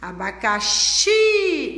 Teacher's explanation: Então, qual é a sílaba forte, a sílaba tônica? O xi.